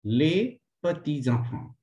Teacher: Here, S is linked to next E and it is pronounced like Z. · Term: linking